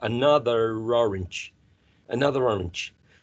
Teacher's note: the speaker is going to use the final ER here to link this um final consonant with the following sound which is a vowel sound